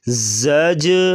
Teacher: زا کو سختی سے پڑھیں گے اور جیم پہ قلقلہ کریں گے آواز کو ہلائیں گے